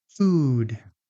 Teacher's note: So for oo, your tongue is high in your mouth. Your lips are strongly rounded, and the sound is relatively long. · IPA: /u/